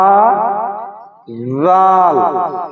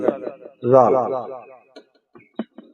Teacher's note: জিহ্বার আগা দিয়া সামনের দাঁতের আগা দিয়া দাল